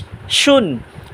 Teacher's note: আর শিন উচ্চারণ হবে জিব্বার মাঝখান তালুর মাঝখান